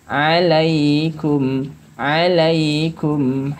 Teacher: pengucapan huruf kaf harus dengan nafas